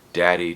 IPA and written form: ˈdæ.ɾi (daddy)